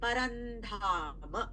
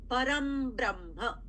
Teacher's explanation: The Anuswara becomes makara because of the ba in the next word, the first letter of the next word, the second word.